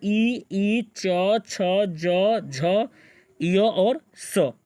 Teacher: तालु बोला जाता है ई, च, छ, ज, झ, य और स